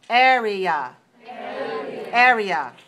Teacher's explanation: area is stressed on the first syllable. So we say 3-1.